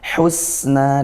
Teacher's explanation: Husna, haknya sempurnakan, bukan hu tapi hu, husna dari tengah tenggorokan sebagaimana huruf ain ya. Kemudian sin alirkan, hus desis, na mad tabi'i.